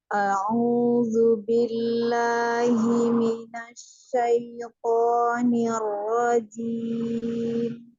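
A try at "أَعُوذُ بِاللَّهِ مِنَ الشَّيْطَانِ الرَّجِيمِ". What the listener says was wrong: Sudah bagus, hanya di huruf dzalnya saja. A'udzu. Dzal ya, bukan a'udzu. A'udzu.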